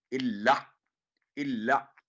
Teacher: اللہ اللہ یعنی اللہ نہ ہو، حمزہ کی آواز نہ آئے، سافٹ آواز ہوگی گلے میں سے